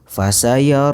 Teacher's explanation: Kemudian hukum yang kedua adalah tafkhim. Lafadz Allah yang dibaca dengan tebal dan dipanjangkan 2 harokat